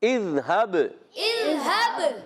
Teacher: زال کو نہیں ہلانا، با پر کلکلا کریں گے